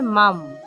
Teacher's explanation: তারপর দেখুন এখানে মাম আছে, কারণ এখানে অনুস্বার আছে। অনুস্বারের শুদ্ধ সংস্কৃত উচ্চারণ হবে হসন্তযুক্ত ম, তাহলে এখানে হবে মাম।